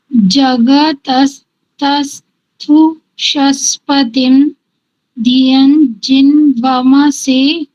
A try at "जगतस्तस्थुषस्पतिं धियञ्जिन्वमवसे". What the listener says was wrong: वमवसे, वमवसे, वमसे नहीं, वमवसे।